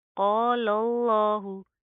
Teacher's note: لفظ اللہ کا یہاں پر کیا رول ہے کہ لفظ اللہ سے پہلے لام کے اوپر زبر آ رہی ہے تو لفظ اللہ کو ہم موٹا پڑھیں گے ٹھیک ہے. قال اللہ پہلا لام باریک دوسرا لام موٹا